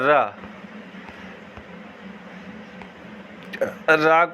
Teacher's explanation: रा को प्रकंपी या लुंठित व्यंजन कहते हैं क्योंकि इसका उच्चारण करते समय जीभ की नोक मसूड़े के नज़दीक आकर कांपती है